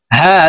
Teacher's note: হা হলকের শুরু থেকে হা হরফ উচ্চারণ হবে